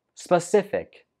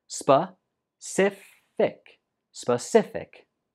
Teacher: The stress goes on the second syllable.